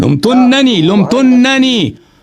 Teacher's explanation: تو ہم نے نون کو تشدید دیا، نون پہ غنہ بھی کرنا ہوتا ہے